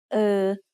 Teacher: which is a little bit like the er in her only said with a more relaxed throat